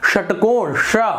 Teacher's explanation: जीभ का जो पीछे वाला भाग है, जब वो टकराता है दांत और तालू से ऊपर, थोड़ा वहां पर भारीपना होता है तो वहां पर षटकोण श ये उच्चारण होता है, तो उसे हम श मूर्धन्य कहते हैं।